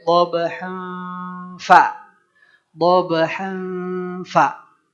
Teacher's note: Dhabhan berarti kita siap-siap nih si 2 gigi seri atas kita ya menempel ke bibir bawah bagian dalam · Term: ikhfa